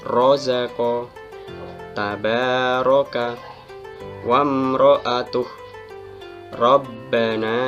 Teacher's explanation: Cara membaca ro' tafkhim yaitu ditebalkan makhraj dan suaranya, dan kedua bibirnya moncong ke depan, atau dalam bahasa Jawanya adalah mencucuk.